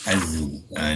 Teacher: mengeluarkan suara dan udara serta menekan hujung lidah pada belakang gigi kacip bawah ya. Belakang tu maksudnya sebelah dalam ya. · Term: zai sakinah